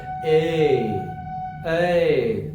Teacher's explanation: ये ए और ऐ ये कंठ और तालु दोनों से मिलके बनता है। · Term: कंठ तालु